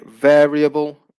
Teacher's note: If we use varied, then the stress will stay on the first syllable. If we say variable, the stress also stays on the first syllable.